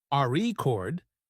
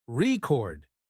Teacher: if you stress the first syllable, RE chord, it's a noun, but if you stress the second syllable, record, it's a verb practicing stress.